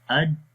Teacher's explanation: کلکلا کا مطلب ہوتا ہے جنبش، یعنی کہ اس آواز کے اندر جنبش پیدا ہوتی ہے، اور وہ کیسے ہوتی ہے؟ اج صفت جہر بھی آ گئی یعنی کہ سانس رک گیا، اور شدت بھی آ گئی یعنی کہ سختی کے ساتھ، یعنی کہ آواز مخرج میں بند بھی ہوگی اج، اور جب ہم نے اس دباؤ کو ختم کیا تو پھر قلقلہ بھی آ گیا، قلقلہ کی جو صفت تھی وہ بھی آ گئی جنبش، یعنی اج اج۔